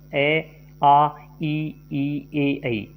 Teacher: जिन स्वरों के उच्चारण में होठ या होष्ट गोल न होकर खुलकर अन्य किसी आकार में खुले उन्हें अवृत्ताकार स्वर कहते हैं।